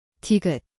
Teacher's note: Da do ini adalah huruf tiget. Ia berbunyi seperti di garis miring T. Tempatnya adalah hujung lidah. Dilepaskan.